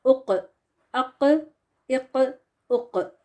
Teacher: تو اس طرح سے یہ باؤنس یا ایکو والی آواز آئے گی تو اس کو قلقلہ کہتے ہیں۔ تو جب بھی یہ قاف ساکن ہو کے آتا ہے when قاف is ساکن the مخرج is cut off by bouncing the sound and this bouncing is called قلقلہ، ٹھیک ہو گیا۔